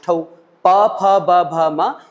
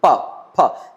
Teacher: इनको हम होठ की सहायता से बोलते हैं